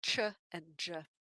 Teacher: begins by cutting off the flow of air but instead of just going directly into a vowel there's some tightness there that causes frication uh roughness in the airflow that we can hear english has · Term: affricate